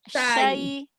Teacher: Huruf shinnya mana tafasyinya? Tengah lidah lagi.